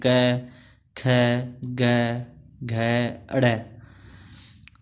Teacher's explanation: ठीक है, नेक्स्ट आता है कंठ्य। इनके उच्चारण में कंठ का स्पर्श होता है